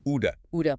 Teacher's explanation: Our friend the flap t. That t is between two vowel sounds, so it turns into a quick d sound.